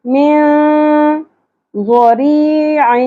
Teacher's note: تو اس مقام پر ہم اخفاء مع الغنہ کریں گے. ٹھیک ہے. من چھپانا بھی ہے اور کھینچنا بھی ہے ناک میں